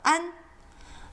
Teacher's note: there isn't a very good english equivalent it's not an and it's not on it's somewhere in between